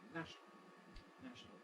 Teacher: most native speakers most of the time compress this sort of word into a two- syllable pronunciation